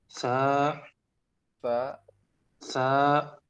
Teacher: Ujung lidah ke ujung gigi seri.